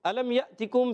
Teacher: میم ساکن کے بعد یا آ گیا اظہار شفی, یہاں پر بھی غنہ نہیں کریں گے